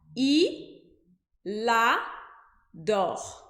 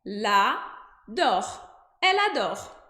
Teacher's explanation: o L do il grudou com o A do adore para formar uma sílaba, para fazer lá.